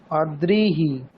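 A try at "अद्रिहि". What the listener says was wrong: দীর্ঘইকার বলে দিলেন তো, হ্রস্বইকার অদ্রিহি। হ্যাঁ, তাহলে দুটোর মধ্যে পার্থক্য কোথায় আছে? উচ্চারণে পার্থক্য কোথায় আছে? এটাই হচ্ছে সমস্যা। দেখুন, যদি আমরা রিকার বলি, রিকারটা কিরকম বর্ণ, স্বরবর্ণ না ব্যঞ্জন বর্ণ? স্বরবর্ণ। তাহলে স্বরবর্ণের অন্যান্য যেমন উচ্চারণ, যদি এখানে অদ্রি না থেকে অরি অরি থাকতো, অ রয় হ্রস্ব ইকার, ধরুন এখানে অ রয় হ্রস্ব ইকার রয়েছে, অরিহি, তাহলে এখানে আমরা হ্রস্ব ইকারটাকে অর ইহি এরকম কি বলছি?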